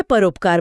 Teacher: अ जो गले से है और ऊ जो होठों से है उनके बीच का समझौता है ओ। तो पर प्लस उपकार में अ और उ ने मिलकर नया गुणी स्वर ओ बना लिया।